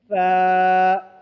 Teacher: ज़ुबान की नोक को ऊपर के दांत के किनारे पर लगाने से सा अदा होते हैं। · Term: सा का मखरज